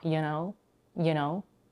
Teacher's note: The vowel in you is reduced to a schwa